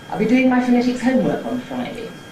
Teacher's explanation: Four stresses but only two accents, the ones which are pitch prominent being the /duː/ there which jumps up, and the /həʊm/ which starts that Nuclear Fall there. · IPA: │ I’ll be ˈdoing my pho˚netic ˋhomework on ₒFriday │